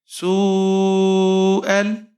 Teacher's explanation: حمزہ کے اوپر زبر ہے، آگے لام ساکن ہے، حمزہ کو لام کے ساتھ ملائیں گے۔